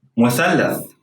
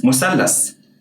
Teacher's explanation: In standard Arabic, sih is pronounced like an unvoiced th sound, as in the word think, while sin stays the same in both standard Arabic and Egyptian Arabic.